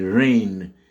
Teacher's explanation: Pour la pluie, en anglais, ça s'écrit R-A-I-N. Mais ça se prononce avec le phonème A, donc la diphtongue A